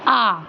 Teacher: जब आप बोलेंगे आ को तो आपका जो मुख द्वार होता है वो पूरा खुल जाता है, आ। ठीक है, तो विवृत स्वर 1 होता है, आ।